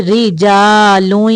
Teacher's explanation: را کے نیچے زیر ہے اس لیے را کو باریک پڑھیں گے